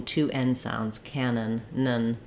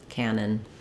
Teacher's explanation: So ka should be long, nun should be short